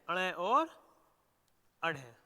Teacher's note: उत्क्षिप्त व्यंजनों के उच्चारण में हमारी जीभ मूर्धा को स्पर्श करती हुई त्वरित गति के साथ ऊपर उठती है और नीचे गिरती है।